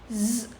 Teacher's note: if I'm saying z, there is a vibration in my throat, and this is the identification of voiced sound.